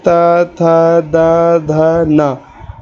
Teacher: इन अक्षरों को बोलते समय आपकी जो जीभ है वो दातों को स्पर्श करेगी। इसलिए इसका जो उच्चारण स्थान है वो दंत्य है।